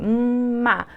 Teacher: o M, ele é um fonema que ele é bilabial, produzido aqui na frente